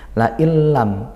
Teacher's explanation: Nun sukun bertemu lam, maka idgham bila gunnah. Karena idgham masuk, kita seolah tidak mendengar bunyi nunnya.